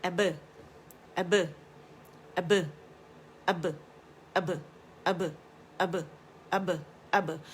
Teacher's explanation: یہ خوبصورت سا جو ببل آپ کو سنائی دے رہا ہے، ہونٹوں کے گیلے سے آپس میں مل کے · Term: قلقلہ با